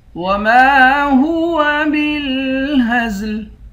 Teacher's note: میم کے بعد الف ہے، الف حروف مدہ ہے، اس کو ایک الف کی مقدار کھینچ کر پڑھیں گے